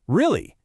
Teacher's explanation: First, for surprise, your voice goes way up at the end.